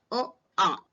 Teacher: इस समय हमारा स्वर कंठ से निकलता है। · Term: कंठ स्वर